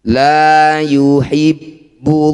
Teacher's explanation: Lafaz Allah didahului dumah. Maka lamnya harus dibaca dengan tafkhim atau tebal.